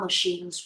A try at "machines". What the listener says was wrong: Machine. No, it's CH, not cha. Sha. Machines.